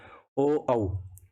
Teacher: तो इनका जो वर्ग है वो है कंठोष्ठ, यानी कंठ और होष्ठ से। तो ये हमारे स्वरों का उच्चारण स्थान है।